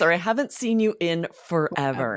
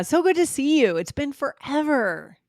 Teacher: and we really emphasize forever